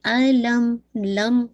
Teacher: میم پہ جو آپ کا جو غنہ ہے وہ ناقص غنہ ہے